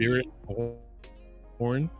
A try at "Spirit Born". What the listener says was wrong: sounds like you're saying spirit porn, and I'm really hoping that that's not what you're saying. Born.